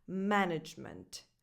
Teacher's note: the stress is on the first syllable, ma, with that a vowel, the same that you have in words like man, cat, and bad